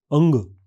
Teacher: इस नासिके स्वर के उच्चारण में बाक अंग सामान्य नासिक स्वरों की स्थिति में रहता है। मुलायम तालु पूरी तरह ऊपर नहीं उठता, इसलिए हवा आंशिक रूप से नाक के रास्ते निकलती है।